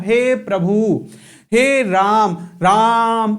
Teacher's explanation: प्लुत स्वर कोई स्वर वास्तविकता में नहीं होता, लेकिन जब हम नाटक में किसी को संबोधित करते हैं, जैसे मैं बोलता हूं हे प्रभु, हे राम, राम ऐसे बोलते हैं, तो जब हम उस वर्ड को खींचते हैं वही कहलाता है प्लुत स्वर। मतलब जिसके उच्चारण में दीर्घ स्वर से भी ज्यादा समय लगता है वो कहलाता है प्लुत स्वर।